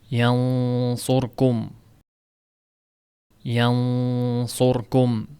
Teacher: yan deganda tilni orqa qismi ko'tarilganligi sababli yo'g'onroq chiqadi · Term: Yo'g'on ixfo